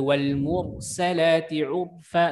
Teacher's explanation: ra tafkhim ya. Ra itu juga ya karena huruf sebelumnya berharakat dhammah